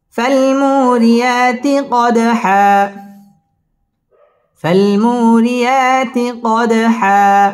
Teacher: রিয়া খারা জবর একালিফ টেনে পড়তে হবে। কদ দাল কলকলার হরফ ধাক্কা দিয়ে পড়তে হবে। কদ হা একালিফ টান দিয়ে ওয়াকফ করতে হবে।